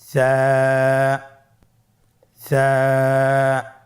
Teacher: জিহ্বার আগা সামনের উপরের দুই দাঁতের আগার সঙ্গে লাগিয়ে উচ্চারিত হয়